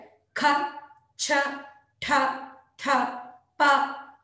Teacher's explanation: ಹೆಚ್ಚು ಪ್ರಾಣದಿಂದ ಹೆಚ್ಚು ಉಸಿರು ಉಚ್ಚರಿಸಲ್ಪಡುವ ಅಕ್ಷರಗಳು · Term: ಮಹಾಪ್ರಾಣ ಅಕ್ಷರಗಳು